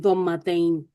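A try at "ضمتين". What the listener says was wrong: वो फखम वाला आ गया है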